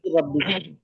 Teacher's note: নুন সাকিনকে র এর সাথে মিলিয়ে বিনা গণ্যায় পড়তে হবে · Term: ঈদগামে তাম